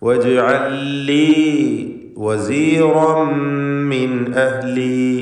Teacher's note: സാക്കിനത്തായ ലാമും ശേഷം ഉള്ള ലാമും രണ്ടും ഇദ്ഗാം ചെയ്തുകൊണ്ട് വജ്അൽ ലി ഒറ്റ ലാമാക്കി ഉച്ചരിക്കുന്നു. വസീറൻ റായിന് തഫ്ഖീം കൊടുക്കണം.